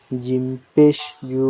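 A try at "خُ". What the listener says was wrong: খ এটা খ, এটা তো জিম না, উপরে নোক্তা না।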